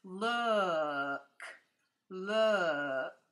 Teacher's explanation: it's not an ooh. It's similar to that, but it's an uh. It's kind of a hard sound.